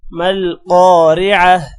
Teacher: آگے وقف ہے اس لیے ہم وقف کریں گے تو تا ہا میں چینج ہو جائے گا